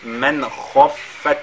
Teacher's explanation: من خفت, ici nous avons an-nun sakina tout suivi de la lettre kha, on fait al-izhar, et khafat, la lettre kha est lue avec at-tafkhim